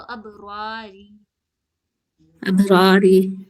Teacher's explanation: कलकला करेंगे, यानी झटके के साथ पढ़ेंगे